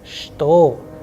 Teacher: However, when we write it, we write with che, but when we pronounce it, the sound is like sh, sh.